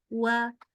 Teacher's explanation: Jangan lupa mulutnya dari u dulu dari kayak u